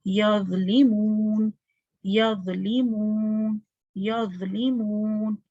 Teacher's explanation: ضوں کی آواز کیسی آئے گی، موٹی اور نرم